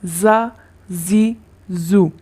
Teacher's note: دونوں دانتوں کے اندرونی کنارے سے زبان کی نوک لگے گی تو یہ حروف ادا ہوں گے